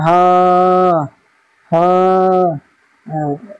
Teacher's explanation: হার মাখরাজ হচ্ছে কণ্ঠনালী বা গলা, গলা, গলা শুরু হতে উচ্চারিত হয়